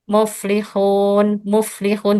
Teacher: bibirnya itu tidak membulat, tidak monyong · kesalahan dalam membaca huruf waw madiyah adalah bibir tidak membulat